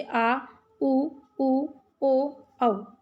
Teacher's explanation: जिन स्वरों के उच्चारण में जीभ का पीछे का भाग काम करता है उन्हें पश्च स्वर कहते हैं